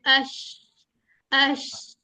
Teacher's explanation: शीन के ऊपर एक तो हमने कहा था तफशी है। यानी कि शावरिंग साउंड आनी है।